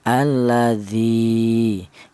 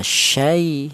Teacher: kalau cara bacanya dipanjangkan dua harokat, alladzi. Kalau yang lin cukup lentur saja